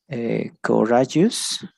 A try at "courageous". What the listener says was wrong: All right, it's close, but the one in the middle is going to be more like A, so it's going to be courageous. Courageous. Courageous.